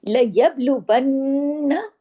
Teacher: جب بھی یہ جزم کے ساتھ یا سکون کے ساتھ آتے ہیں تو ان پہ کلکلا ہوتا ہے، یعنی آواز کو مخرج پہ ہلا دیتے ہیں